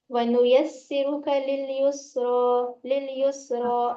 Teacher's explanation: रा को जी खींचेंगे, खड़ा जबर है, एक अलिफ की मिकदार खींच कर पढ़ा जाएगा